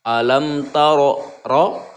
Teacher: Ketika huruf ro yang di atasnya berharokat fathah itu dibaca tafhim tebal.